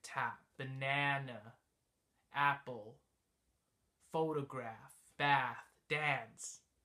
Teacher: the signature features of this sound is that the tongue is up in the middle and it's sort of back which creates the I guess it resonates more in the back